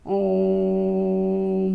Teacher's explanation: प्लुत स्वर, इसके उच्चारण में ह्रस्व स्वर के उच्चारण से 3 गुना समय लगता है